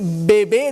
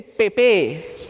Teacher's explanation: si el niño en vez de decir bebé dice pepe que está alterado que está alterado la sonoridad